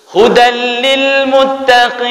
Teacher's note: Ketika dia dimasukkan, langsung bila gunnah, tanpa dengan didengungkan. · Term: idgham bila gunnah